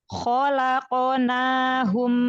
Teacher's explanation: makhraj huruf q itu dari pangkal lidah bagian atas ketemu langit-langit lembek pangkal lidah terangkat karena huruf qof huruf istila Kho